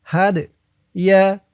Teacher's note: এই দালটা কলকলার হরফ ধাক্কা দিয়ে পড়তে হবে